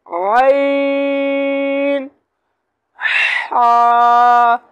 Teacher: तो दरमियान वाले हिस्से से अदा होते हैं आइन, हा।